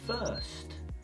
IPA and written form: fɜːst (First)